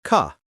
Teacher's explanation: British English, especially received pronunciation, tends to drop that R when it's at the end of a word. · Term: R sound